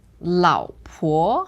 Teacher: the first one is third tone second one second tone